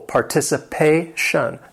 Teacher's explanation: This word has five syllables. The stress is on that fourth syllable.